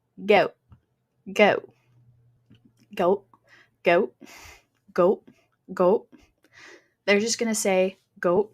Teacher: Now, the diphthongs are being simplified.